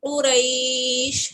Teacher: اب یہاں وقفن کی صورت میں یا لین کو سٹریچ کریں گے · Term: مد لین آریس